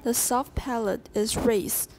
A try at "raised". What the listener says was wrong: Raised. Watch, there's a Z in there. Remember the mother racing her children?